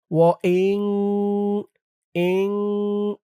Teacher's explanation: গুন্নাহটা নাকের ভিতরে বাজবে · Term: ইকফা গুন্নাহ